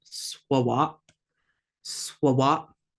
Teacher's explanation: We've got that schwa, that sound. The A makes an ah, and then it just abruptly stops because of the glottal stop.